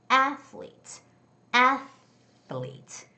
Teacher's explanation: It's the first syllable stress, so it's going to be athletes.